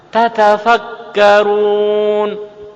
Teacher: Tekanan pada tak pertama dan tak kedua harus sama, tidak boleh dikurangi. Jadi kenyotannya 2 kali.